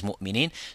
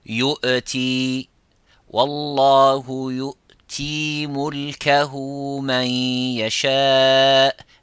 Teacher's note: whenever the Hamza comes with the sukun, try to avoid making that vibration of the echoing of the qalqala and try to give it slightly a little bit of time and pronounce it from the throat, and which is the aqsa al-halq, which is the farthest distance from the mouth.